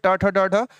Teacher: जितने भी ट वर्ग होंगे ट ठ ढ ढ ये मूर्धन्य है